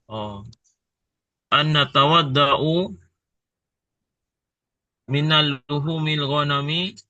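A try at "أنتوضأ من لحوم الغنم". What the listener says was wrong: minal, masa minal. bukan nah, min aja min luhumil ghanam.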